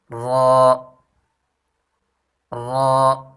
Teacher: را کی مخرج زبان کی پشت اور اس کا کنارہ جب ثنایا اور رباعی کے مسوروں سے ملے، یعنی سامنے والے دو دانت اور ان کے جو قریب دو دانت ہوتے ہیں جس کو رباعی کہتے ہیں ان کی مسوروں سے ملے تو یہ حرف ادا ہوتا ہے.